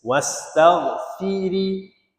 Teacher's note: Nah sini baca tarqikan ro. Sebab ra baris kasrah. Ha ra baris kasrah. Kita baca nipis.